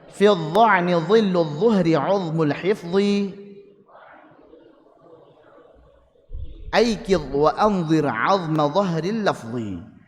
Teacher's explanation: makhrajnya huruf dha di ujung lidah